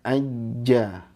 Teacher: istifal, pangkal lidahnya tidak terangkat